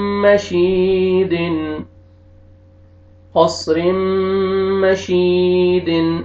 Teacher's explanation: रा कसरतैन मीम शद रिम, क़स रिम, मीम फतहा मा, शीन कसरा या सुकून शी, मशी, दाल कसरतैन दिन, मशीदिन, क़स्रिम मशीदिन, क़स्रिम मशीदिन। इसमें या मद्दा भी है, या सुकून से पहले कसरा, आपने शीन को खींचना भी है